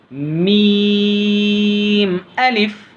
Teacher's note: मीम जब पढ़ते वक्त नाक में आवाज़ नहीं जाना बल्कि मीम की आवाज़ नीचे की तरफ जाना